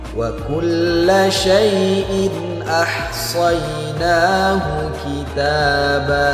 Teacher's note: Tanwin berjumpa dengan huruf alif, maka harus dibaca jelas. Hukumnya adalah izhar.